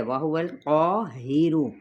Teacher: ہا اقصی حلق سے سینے کے قریب والے حصے سے، را کی پیش کو موٹا ادا کرتے ہوئے لمبا نہیں کریں گے۔